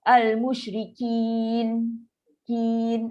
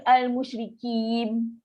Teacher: menutup mulut ketika menyebut huruf nun. Dia bertukar menjadi mim.